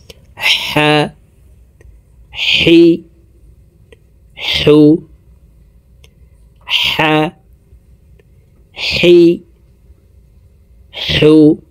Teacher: এই হার উচ্চারণ হলকের মধ্যখান থেকে হবে, কারণ এই হার মখরাজ হলকের মধ্যখান থেকে।